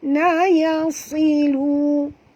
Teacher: huruf sad tebal walaupun baris bawah, kerana makhraj huruf sad adalah huruf isti'la ya. Dia kena baca tebal.